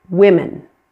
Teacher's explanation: That O in women is pronounced as a short I.